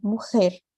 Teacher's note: sempre em espanhol, eu só vou ter o som do E fechado. Sempre E.